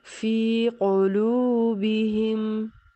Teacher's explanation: जैसे फ़ी क़ुलूबिहिम, लाम पेश हुआ लो, वाव से पहले लाम पर पेश है, वाव साकिन से पहले लाम पर पेश है तो इसको वाव मद्दा कहेंगे और एक अलिफ की मिक़दार में खींच कर पढ़ेंगे